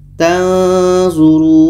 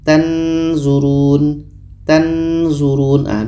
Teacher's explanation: Dikarenakan kita ketika sebut huruf nun kita sudah merasakan huruf zo, maka akan terhasil di situ bunyi samar